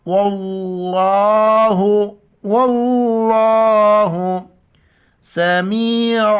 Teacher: یہاں پر زبر ہے تو لفظ اللہ کو ہم موٹا کر کے پڑھیں گے